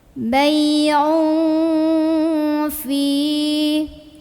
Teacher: tanwin dhammah ini dibunyikan samar-samar mau bilang fa ya, sambil dengung. Bay'un fi mad tabi'i karena ada ya sukun sebelumnya kasroh. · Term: ikhfa awsat